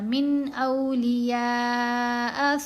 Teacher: یہاں اظہار ہے من، من کر کے لمبا کر کے نہیں پڑھنا، غنہ نہیں کرنا